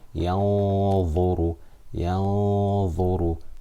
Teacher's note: I'm concealing it. Because Dha is a full mouth letter, this Ghunna for 2 harakat is full mouth.